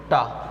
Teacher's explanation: आप टा का उच्चारण करें, आपकी जीभ उलट जाएगी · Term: मूर्धा